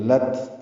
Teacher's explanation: تا ساکن پہ ہمس ہے یعنی سانس جاری رہتی ہے اس کے پڑھنے میں